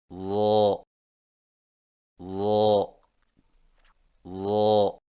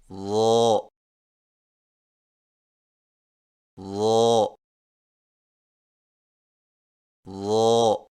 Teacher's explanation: ضا کی ادائیگی میں زبان کی نوک کو سامنے والے اوپر کے دو دانتوں کے اندرونی کناروں سے نرمی سے لگا کر اور زبان کے پچھلے حصے کو تالو کی طرف بلند کرتے ہوئے موٹی آواز میں پڑھیں، یعنی ضا ضا ضا.